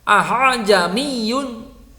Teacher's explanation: Aha jamiyun harus dibaca tashil. Tashil adalah meringankan bacaan hamzah, samar-samar antara makhraj hamzah dengan alif.